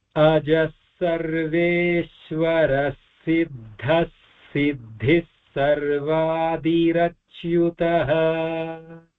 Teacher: So all the visargas are followed by sa here. I gave the full visarga for the separation, but when it combines, it takes the form of the following sa, and then it becomes double sa there.